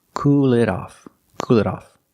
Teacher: So if you use it, the pronoun, put it in the middle. And the T is pronounced like a fast D